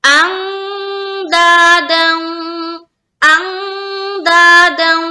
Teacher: ہم اخفا کر رہے ہیں. کیوں؟ کیونکہ نون ساکن کے بعد دال ہے